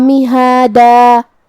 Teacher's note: کلمت مہادہ میں ہا کے بعد کھڑا زبر ہے تو یہاں مد الف ہوا. ہم اپنی آواز 2 مد کے برابر لمبی کریں گے